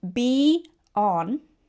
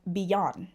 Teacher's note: be on is usually pronounced as beyond, right? With a Y inserted in the middle. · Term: vowel-to-vowel linking